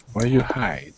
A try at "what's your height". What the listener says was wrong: you're not pronouncing the S you have to say what's